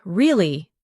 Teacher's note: your voice goes up slightly at the end